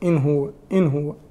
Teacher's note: النون هنا تظهر قبل الهاء لأن الهاء من حروف الإظهار، فالإظهار في اللغة هو الإيضاح والبيان، واصطلاحا هو إخراج الحرف من مخرجه من غير غنة في الحرف المظهر.